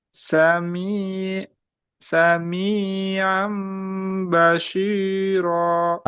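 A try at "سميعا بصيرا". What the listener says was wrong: Sod bukan shi, shi. Si. Coba. So, si.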